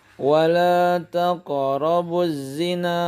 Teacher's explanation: qaf yang mati atau yang sukun itu adalah bacaan qalqalah. Bacaannya dia dipantulkan. Qalqalah dalam hal ini qalqalah sughra.